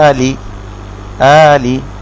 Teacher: আতে এক আলিফ মাদ, লিতে কোনো মাদ নেই, আলি মাদ মানে হচ্ছে টেনে পড়া।